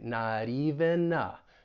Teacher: we'll link the N with the article A